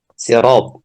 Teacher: Jadi ketika fathah maka ra-nya dibaca tebal. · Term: tafkhim